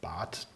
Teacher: it sounds like I'm saying a T at the end, but it's actually a D. When I say the plural, Bäder, then it's the softer one.